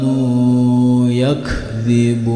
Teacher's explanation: jika dihentikan maka ini termasuk bacaan sampai dengan 6 harokat